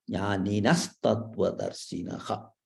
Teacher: That visarga is replaced by sa.